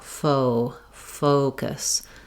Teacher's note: because it's the stressed first syllable, it's going to be held a little longer. Usually just holding your O longer is enough to be able to get that glide correct. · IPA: /oʊ/